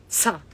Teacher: Sa is always aspirate. It's sa. It's always a strong sa.